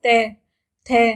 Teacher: इनके उच्चारण में जीवा दांतों में लगती है, यानी दांतों का स्पर्श करती है।